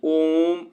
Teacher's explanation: तो यहां पे देखिए जो प्लुप स्वर होता है इसको उच्चारण करने में यह दीर्घ स्वर से ज्यादा समय लगता है। इसमें तिगुना ह्रस्व स्वर से तिगुना समय लगता है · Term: प्लुत स्वर